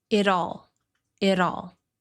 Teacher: this T is soft because it's between two vowels